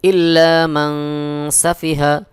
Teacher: নুন সাকিনের পরে সিন ইকফার হরফ ইকফা গুন্না করতে হবে